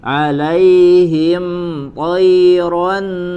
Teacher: Huruf mim sukun tidak disertai dengan tambahan guna langsung